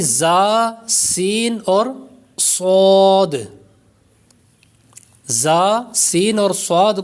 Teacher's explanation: ان 3 حروف یعنی زا، سین اور صاد، زا، سین اور صاد کو ادا کرتے وقت سیٹی کی طرح آواز نکلتی ہے، اس لیے ان حروف کو حروف صفیریہ یعنی سیٹی والے حروف کہتے ہیں۔